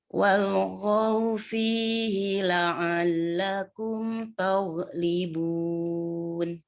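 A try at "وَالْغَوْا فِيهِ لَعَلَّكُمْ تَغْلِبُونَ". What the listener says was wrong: Bagus.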